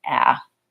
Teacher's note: I'm using a clear vowel, the a vowel, on the stressed syllable in banana. And then my last syllable is another schwa sound.